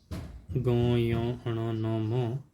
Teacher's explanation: ये नासिका से बोले जाते हैं, नासिका से भी बोले जाते हैं